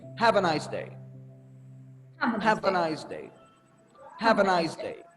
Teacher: you start loud and then you end it with a falling tone because it's a statement